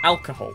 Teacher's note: alcohol stress is on the first syllable